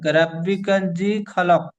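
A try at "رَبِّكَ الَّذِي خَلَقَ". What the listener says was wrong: রব্বি কাজি হবে না, রব্বি কাল লাজি লাম জবর লা। প্রথমে লামটি কাপের সাথে যুক্ত হবে, কাপ লাম জবর কাল, লাম জবর লা, কাল্লা। জালি আছে জি, টান দিয়ে বলতে হবে। রব্বি কাল্লাজি খলাক।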